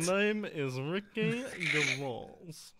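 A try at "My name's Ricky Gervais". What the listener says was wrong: No. Name's Ricky Gervais. You have to break it. It has to be two-toned.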